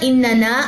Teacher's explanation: اننا الف مد ہے یہاں پہ، اس کو لمبا کریں گے، اس نون کو لمبا نہیں کرنا